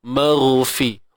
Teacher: huruf ghain ni dia bersifat rakhawah